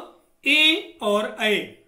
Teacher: ए और ऐ, यह 2 वर्ण ऐसे हैं जिनका उच्चारण कंठ और तालु से होता है।